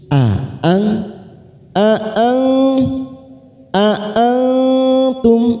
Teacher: hati-hati ada 2 huruf hamzah. A'ang tidak boleh digabungkan ya, tidak boleh dilunakkan, tetapi kita membacanya seperti kita putus.